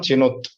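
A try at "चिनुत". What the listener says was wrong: Chinuta. Completely. Tell that completely. It is not half letter. Chinuta. Chinuta.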